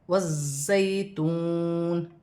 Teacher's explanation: یہاں پہ واو مدہ بن رہا ہے، واو ساکن سے پہلے پیش آ رہی ہے تو واو مدہ بنے گی، اسے 1 الف کی مقدار کھینچ کر پڑھا جائے گا۔